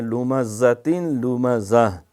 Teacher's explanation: زا کی سیٹی مارنی ہے